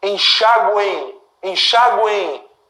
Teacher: Esse M que tem som de I. Enxáguem. Enxáguem. Olha, um I bem fraco no final. Isso aqui funciona como semivogal.